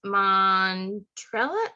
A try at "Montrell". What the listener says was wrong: It's just 2 syllables, Montrell.